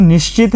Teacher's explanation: निश्चित के अंदर च है, च होने के कारण जो श था वह क्या हो गया? तालव्य श